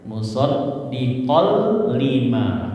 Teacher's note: Ketika idgam bilaguna nun sukun atau tanwin bertemu lam atau ro, maka idgam masuk bila tanpa gunah. Jadi masuk ke huruf depannya hilang gunahnya hilang